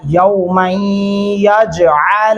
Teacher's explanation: غنہ بھی کریں گے اور جیم پہ قلقلہ ہوگا